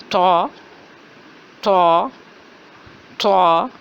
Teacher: آواز ہے موٹی اور جھٹکے والی